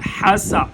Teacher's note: فتقبلها ربها بقبول حسن، حسا، سین سیٹی جیسی آواز آنی چاہیے